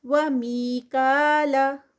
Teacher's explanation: یا سے پہلے پھر زیر ہے 2 کاؤنٹس کا اسٹریچ